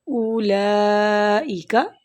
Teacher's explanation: لام پر کھڑی زبر ہے اور اوپر مد بھی ہے، تو ہم اس کو تین حرکت پڑھیں گے